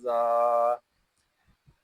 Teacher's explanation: ذال کھڑا زبر زا. ذال کو ایک الف تک کھینچ کر پڑھیں گے کیونکہ یہاں کھڑا زبر ہے